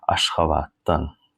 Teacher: I say Ashgabat dan, because t and d together we read as a t